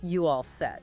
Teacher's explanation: The rising pitch at the end of set tells you it's a question even though the word are is gone. · the auxiliary verb is frequently omitted if the meaning is clear from context and, crucially, from the rising intonation. Like the example, are you all set, becoming just you all set.